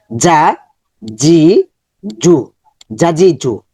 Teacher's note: জিহ্বার মধ্যখান উপরে তালের দিকে যাবে